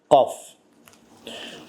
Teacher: qaf hərfi dilin boğaza yaxın olan hissəsindən çıxır. Dilin boğaza yaxın olan hissəsindən çıxır. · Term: qaf hərfidir